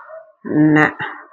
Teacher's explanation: நாக்கின் நுனி மேல்வாய் பற்களுக்கு மேல் உள்ள மேடான பகுதியாக முன்னன்னத்தை தொட்டால் ந பிறக்கும் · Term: டன்னகரம்